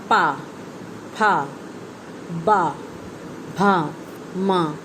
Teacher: इन्हें ओष्ठव्य इसलिए कहा जाता है क्योंकि दोनों ओठ इस उच्चारण के लिए मिलते हैं